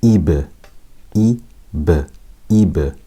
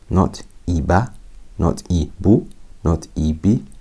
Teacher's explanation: It's not Fatha, Dhamma, Kasra. It's just a special bounce. It's an echoing sound.